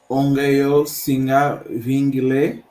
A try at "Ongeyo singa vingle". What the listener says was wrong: O E não pode sair. O E não pode sair.